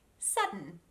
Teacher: i'm placing my tongue in position to make a d sound but because of the n it's the same place where you would pronounce an n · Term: silent d